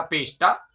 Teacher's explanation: मूर्धन्य शकार पहले आ गया तो पेश प्लस ता के स्थान पर टा हो जाएगा, पेष्टा बनता है।